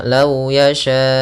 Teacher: panjangkan empat harakat baru baca u-nya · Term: mad wajib muttasil